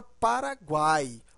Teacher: esse U é fraco esse I também é fraco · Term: tritongo